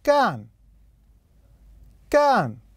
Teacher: نلاحظ أن مستوى الصوت كان فيه نزول للأسفل فتكون النغمة الرابعة